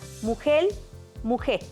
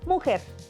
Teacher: Se pierde la R o se cambia por L. Países: Cuba o zonas costeras.